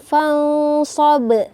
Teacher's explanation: ini merupakan qalqalah kubra, yang mana pantulannya itu harus keras